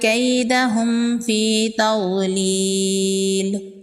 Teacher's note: یہاں پر بھی میم ساکن کے بعد یا ہے، یہاں پر بھی اظہار شفوی کا قاعدہ ہوگا۔ میم ساکن کے بعد نہ تو با ہے اور نہ ہی میم ہے تو یہاں پر اظہار شفوی ہوگا، یہاں پر غنہ نہیں کریں گے۔ جیم حروف قلقلہ میں سے ہے، جیم ساکن ہے، جیم پر قلقلہ ہوگا۔